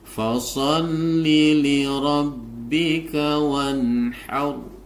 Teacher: Nah, di dalam ketentuan sebelumnya, huruf yang kedua adalah setelah bertemu dengan alif adalah bertemu dengan ha. Nun sukun bertemu dengan ha ini dibaca idhar sehingga nunnya harus dibaca jelas.